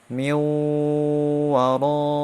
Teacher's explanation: Kemudian idgham yang kedua yaitu idgham bi gunnah. Idgham dengan dengung 2 harokat.